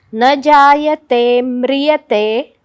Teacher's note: न जायते म्रियते, जायतेच्या ते वराघात, कारण म्री हे जोडाक्षरे पुढे